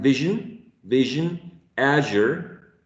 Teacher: What if we have the same place of articulation as sh, and we just add vibration of the vocal folds?